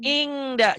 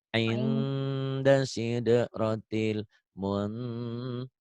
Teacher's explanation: Ikhfa semua ada eng-nya, tapi eng-nya enggak banget.